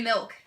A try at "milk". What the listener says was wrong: Did you say it with an E? Milk?